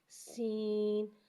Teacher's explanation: سین کو ایک الف یعنی 3 مقدار کھینچ کے پڑھتے ہیں اور سین میں سیٹی کو ظاہر کریں گے، سین۔ تو، تو کو ایک الف یعنی 2 حرکات کے برابر کھینچ کے پڑھتے ہیں۔